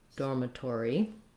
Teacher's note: We then have the letters OR saying or again. So we have two ors in dormitory, a little secondary stress on that tor.